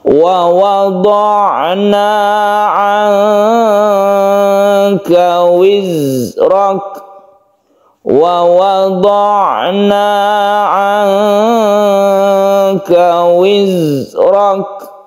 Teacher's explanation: Nun bertemu dengan kaf ini adalah ikhfa, ini kita panjangkan, kita samarkan membacanya.